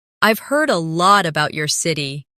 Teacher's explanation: Try to keep the sentence flowing without pausing between about and your.